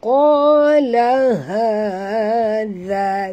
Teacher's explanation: ha simple bunyi daripada dalam halkum